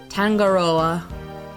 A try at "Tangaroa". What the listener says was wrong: No hard G like mango.